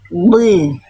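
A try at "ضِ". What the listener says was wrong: Tapi vokal i-nya jelas, jangan jadi kayak kecekek Bunda.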